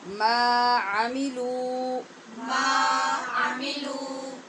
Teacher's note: ما اور لو ان دونوں کو برابر لمبا کریں گے کیونکہ دونوں کے آگے حرف مدہ ہے